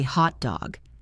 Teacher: The pitch goes high on hot and drops on dog.